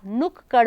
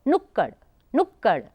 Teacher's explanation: जो पहला वाला क जो हम उच्चारित कर रहे थे उसमें बहुत कम समय लगा, एकदम जल्दी से तुरंत बोल दिया हमने क